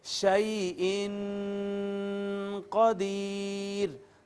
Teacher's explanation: یہاں پر اخفا کریں گے اور آواز کو چھپائیں گے